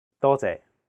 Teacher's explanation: the first character is in high flat tone first tone · the second character is a low flat tone sixth tone